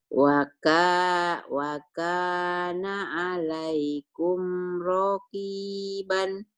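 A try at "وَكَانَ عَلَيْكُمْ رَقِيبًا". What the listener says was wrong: Rohnya pendek, Bu. Wa kana 'alaikum raqiban.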